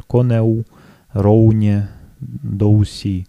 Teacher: на северо-востоке появляется произношение «в» как полугласного, да, например, «конеу», «роуне», «доуси», что уже сближает их с моравскими говорами, и что-то уже похожее появляется на польский. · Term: Билабиальное «в»